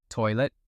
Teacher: And did you catch what just did to the T at the end there? He didn't really say it. It became a little catch in the throat.